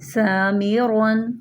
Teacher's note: سین زبان کی نوک سامنے والے نیچے کے دو دانتوں سے لگے تو سین ادا ہوتا ہے